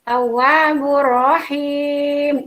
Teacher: mad tabi'i di akhir kalimat maka disebut mad arid disukun, dibaca panjang 2 sampai 6 harokat